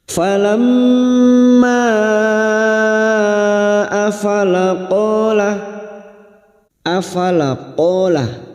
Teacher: bertemunya Mad dengan Hamzah di lain kalimat Mad Jaiz munfasil lima harakat